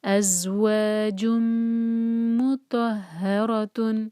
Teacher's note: ازواج مطہرۃ، تو پھر میم کو ہولڈ کر کے ہم پھر تو پڑھیں گے، تو ہیوی ہے، ہا پر شدہ، مطہر، تو ہیوی، ہا لائٹ، را ہیوی اور پھر تن، مطہرۃ، ہا کو ہیوی نہیں کرنا، را کو لائٹ نہیں کرنا، خیال سے، ازواج مطہرۃ۔